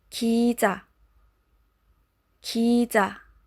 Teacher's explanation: Now the J sound is not as heavy as the one in BM or in English.